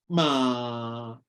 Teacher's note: bermula dengan bibir rapat dulu kemudian pisahkan macam kertas tadi asalnya kertas tu cantik pisahkan bunyi bibir buka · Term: huruf mim